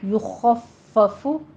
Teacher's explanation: یخفف آخر فا کے اوپر بھی ہونٹ گول ہو جائیں گے، ضمہ ہے